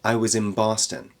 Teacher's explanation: at the end of in before the b in Boston it actually turns into a m sound to connect with the B sound